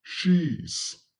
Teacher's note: She has becomes she's. So as we can see that she ends with a vowel, so the pronunciation is z.